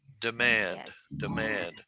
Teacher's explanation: two syllables emphasis on the second syllable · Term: 2-2 word